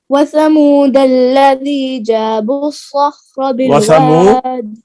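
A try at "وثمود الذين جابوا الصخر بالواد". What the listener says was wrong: वसमूद अल्लज़ीना की नून को मिस कर दिया था, भूले नहीं।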